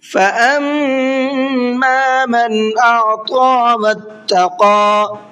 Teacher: میم کے اندر غنہ کریں گے اس لیے کہ اس کے اوپر تشدید ہے